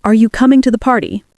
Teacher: Steady tone, slight rise.